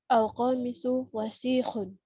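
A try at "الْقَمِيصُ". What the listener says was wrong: Panjang pendeknya. Al-qamisu, mi-nya panjang.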